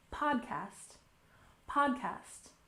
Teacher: with a stress on the first syllable